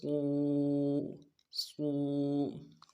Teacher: صاد میں ہونٹوں گول بالکل نہیں کریں گے